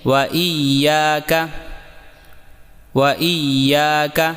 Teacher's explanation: واو کو ہونٹوں کی گولائی سے ادا کریں اور دوبارہ یا کی تشدید کو واضح کریں